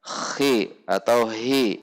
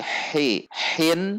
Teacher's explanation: perhatikan ha di tengah tenggorokan